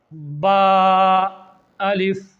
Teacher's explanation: د دواړو شونډو لمدې حصې چې کله یو بل سره په سختۍ سره ولګي، دا د شونډو لمدې حصې دي، دا او دا چې کله د یو بل سره په سختۍ سره ولګي نو د دې نه با ادا کیږي.